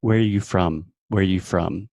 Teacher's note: rising intonation at the very end of the question